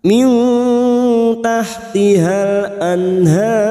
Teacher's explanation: Kita samarkan bunyi nun sukun dan mendengung selama 2 atau 3 harokat. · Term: ikhfa hakiki